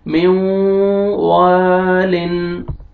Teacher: वाव पे आपने लिप्स को राउंड में लेके जाना है, तब वाव अच्छी तरह अदा होएगा